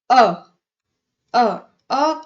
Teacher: अ, अ, को जब आप बोल रहे हो तो हमारी सिर्फ जीभ मध्य में ही उठ रही है, इसलिए इसे हम मध्य स्वर कहेंगे।